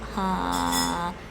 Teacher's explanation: So when you speak tonal languages, you start pitching mid-level at your normal speaking level, like ha, and then practice going up and down with it. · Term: relative tone